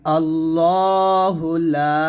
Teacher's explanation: আল্লাহু আল্লাহু এরকম ল বলতে হবে লাম আলিফ জবর লা এখানে তিন আলিফ পরিমাণ টান দিবেন